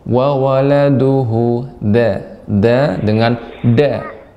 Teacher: da dengan punggung ujung lidah, tidak dengan ujung benar-benar ujung ya, bukan ujung tepi, namun punggung.